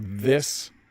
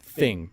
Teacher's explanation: the difference of the voiced Dental fricative as in this and the voiceless fricative in thing